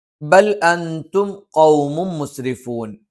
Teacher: ബ 2 ചുണ്ടിൽ നിന്നാണ്. പക്ഷെ മേലെ ചുണ്ട് അല്പം പുറത്തേക്കും താഴെ ചുണ്ട് അല്പം ഉള്ളിലേക്കും കയറി നിൽക്കും.